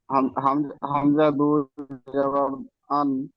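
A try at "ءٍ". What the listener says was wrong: হাও আন নয়, হামজা দুজের ইন। ইন। হামজা দুজের ইন উচ্চারণ হয়।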